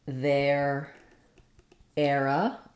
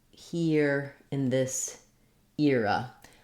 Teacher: a correct pronunciation that's used the difference between these two is for the era air diphthong we're opening a little bit more and gliding closed air to the ER sound and for ear we start with a higher front vowel and glide to the ER sound · you can either use the diphthong air for the first stressed syllable or you can use the diphthong ear